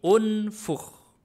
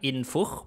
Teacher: yanfukhu bukan unfak unf unfuk pasti u ya tidak ada a Hamzah wasal tidak dibaca a dibacanya kalau enggak i ya u